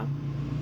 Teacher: ہم میم کو کھینچ رہے ہیں کہ آگے یا ساکن آ رہا ہے